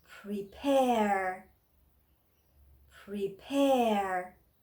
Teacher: you can see the apostrophe is top of the second p so means this stress is on second part of the word second syllable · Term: word stress